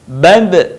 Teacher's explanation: dalam posisi mati, suaranya terdengar mantul